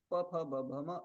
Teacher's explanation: एतेषाम् उच्चारणस्थानम् ओष्ठ इति